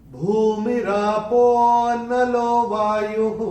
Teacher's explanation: ये जो पो है उसको थोड़ा सा खींच के बोलना पड़ेगा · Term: अवग्रह